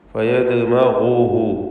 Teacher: ഇവിടെ ദാലിൻ്റെ സുക്കൂനിനെ ഖൽഖല സൂറ നൽകി ശബ്ദം ഹറക്കത്ത് പോലെ ചലിപ്പിക്കണം. ഫയദ്മഗുഹു, ഗൈനിന് തഫ്ഖീം കൊടുക്കണം. നിസ്ബിയ തഫ്ഖീം, മൂന്നാമത്തെ ലെവലിലുള്ള തഫ്ഖീം തടിപ്പിച്ച് ഉച്ചരിക്കണം എന്നർത്ഥം. ഗൈനും ഇസ്തിഅലാന്റെ 7 അക്ഷരങ്ങളിൽപ്പെട്ടതാണ്.